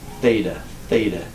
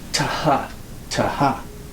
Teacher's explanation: It was a tau, this letter, with an aspiration, a hard H sound.